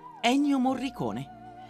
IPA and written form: ˈɛnnjo morriˈkoːne (Ennio Morricone)